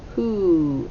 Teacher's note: the w is silent the w h sounds like h and the o sounds like ooh double o who the u sound as in school all right